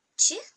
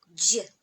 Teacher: Ч он глухой, а Дж более взрывной. И просто к этому звуку Ч добавляйте взрыва чуть-чуть.